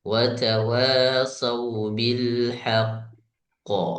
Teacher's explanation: qalqalah akbar jadi harus ditahan lebih lama sedikit